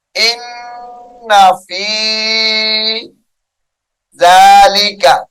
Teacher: ان غنہ کریں گے نون مشدد کی وجہ سے